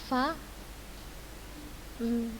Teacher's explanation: Fa di gigi seri atas bertemu dengan bibir bawah dalam